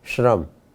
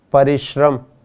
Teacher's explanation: जब इसका उच्चारण करते हैं तो श के साथ र भी बोला जाता है